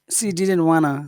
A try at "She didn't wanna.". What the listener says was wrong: So that n is very important because it's the only way that I know that it's negative. So it's important that you pronounce that n clearly. She didn't wanna. She didn't want. Now in the UK they would pronounce the T probably, and they would say she didn't want to. She didn't want to.